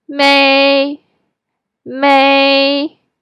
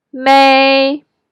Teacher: The first tone is high and flat tone, pretty much exactly like may part of maybe. It doesn't go up or down. You just go to the highest part of your voice range and hold it there for a second.